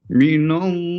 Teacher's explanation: perhatikan pelafalan Allah, walaupun harokatnya itu biasa, tapi tetap dia dibaca panjang. Misalnya, minallahi, la-nya panjangkan.